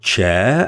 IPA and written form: tʃeə (chair)